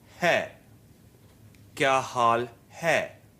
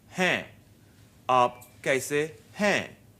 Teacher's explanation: But hai in aap kaise hain is nasalized and pronounced in a different way. You let the air come out through the mouth and nose at the same time.